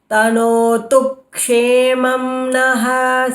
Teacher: Kshemam, the first syllable is always k, so you have to hold the ik.